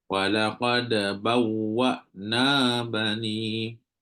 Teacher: dia tak boleh putus antara dal dengan ba dan juga dal dengan qaf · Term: qalqalah surah